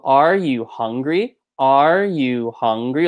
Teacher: it starts high drops middle goes kind of low and then comes back up to high